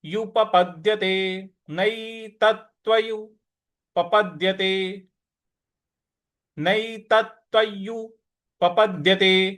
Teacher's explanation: प के बाद जो द है इस पर हमको थोड़ा सा बल लगाना है।